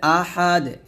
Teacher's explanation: আহাদ এর ডালটা কি হয়ে যাবে কলকলা হয়ে যাবে